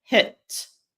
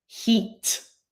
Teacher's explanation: the lips are more rounded with the short I, as in hit, than the long I, as in heat